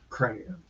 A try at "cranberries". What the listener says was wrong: Not cram. Cran. Not cram. Cran.